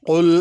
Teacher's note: قل کا قاف موٹا کرنا ہے، کل نہیں پڑھنا اس کو